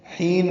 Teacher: حین میں حا وسط حلق سے ادا کریں گے، یا متحد 2 حرکات لمبا کریں گے۔